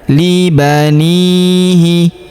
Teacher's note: Huruf ni kita panjangkan 2 harokat karena terdapat ya sukun di depannya.